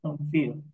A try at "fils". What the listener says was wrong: Oui. La L no se pronuncia.